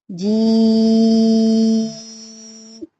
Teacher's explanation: जी के साथ ई की आवाज आ जाएगी, जी। थ्रू आउट आवाज निकलेगी, नाक में आवाज नहीं जाएगी, जी। इस हिस्से को हमने 5 उंगलियां खींचना है, 5 फिंगर, जी।